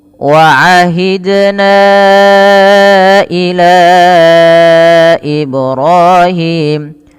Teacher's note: ila ini panjangkan sepanjang empat harakat. · ahidna pantulkan pada lafal dal yang sukun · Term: mad jaiz munfasil